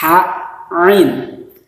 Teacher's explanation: kalau ain itu adanya di tenggorokan bagian tengah